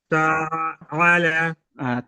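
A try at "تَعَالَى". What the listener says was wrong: তাআলা, আইনটা এই এই- এই এই এটা টান কম হচ্ছে, যেহেতু এটা আলিফ মাদ্দা, তো বলেছিলাম আলিফের ডান দিকে জবর হলে তাহলে, হ্যাঁ হ্যাঁ হ্যাঁ,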